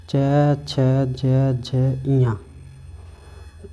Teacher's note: च वर्ग को कहते हैं तालव्य ध्वनि